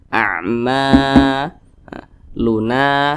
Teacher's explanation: maka huruf mim dibaca panjang namanya thi'i panjangnya dua harakat atau kira-kira dua ketukan ama Luna Na juga dibaca panjang keterangannya sama masih di rumus